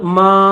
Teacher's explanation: तो ये मीम के ऊपर जबर है और उसके साथ ये अलिफ है और अलिफ के ऊपर छोटी सी मद है, तो 3 अलिफ की लिमिट में इसको खींचेंगे